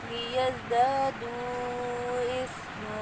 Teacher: زا میں سیٹی کی ساؤنڈ ہے، باریک سیٹی ہے، اور یہاں پہ مد منفصل جائز ہو رہی ہے۔ · وقف کی صورت میں 2 زبر کی تنوین کو 1 زبر کے ساتھ بدلیں گے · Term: وقف بالابدال